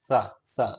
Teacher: स दांत से जीभ टच होती है